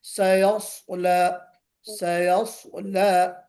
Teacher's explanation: تو سین میں استفال ہے یعنی استعلا نہیں ہے، صاد میں استعلا ہے یعنی صاد کو موٹا پڑھیں گے · سیٹی اگر بجتی ہے دونوں میں تو سواد میں تھوڑا کم بجے گی، سین میں زیادہ بجے گی. سواد میں چونکہ موٹا پڑھا جا رہا ہے تو موٹا پڑھے جانے کے ساتھ ساتھ بہت زیادہ سیٹی بجنے کا جو ہے وہ ممکن نہیں ہوتا، امکان نہیں ہوتا.